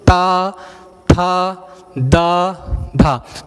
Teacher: हमारी जीभ का अगला हिस्सा ऊपरी तालु के दांत को टच करके और मसूड़ों को टच होकर के बाहर आ रहा, अंदर की ओर भाग रहा है। · ये दंत मूल हो गया, क्योंकि ये दांत को, हमारी जीभ दांत को छू कर है, दंत मूल वर्ण हो गए।